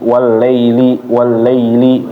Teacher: ya sukun yang dia adalah lin itu jangan sampai dia menjadi e